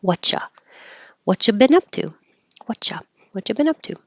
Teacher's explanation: you been up to and what have you can get shorten drop the have push the T and the Y together and now you have a cha and you changes to a Whata what you been up to